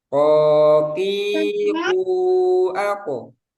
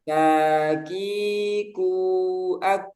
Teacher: Kalau kof dia nggak ada udara, kaf ada udara. Kof tebal, kaf tipis.